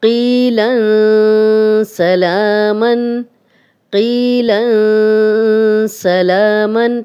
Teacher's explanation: تنوین کے بعد بھی سین آ گیا ہے تو یہ اکفا کا ہی رول ہے اور ہم نون کی آواز کو چھپا کر غنہ کر رہے ہیں۔